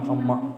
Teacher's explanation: होटों को मिलाए बिना अमा होगा नहीं होगा ना तो म जो है ओ है अमा बोले तो मिलेंगे ही